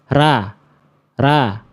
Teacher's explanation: Ra vokalnya masih a jelas karena pangkal lidahnya belum saya naikin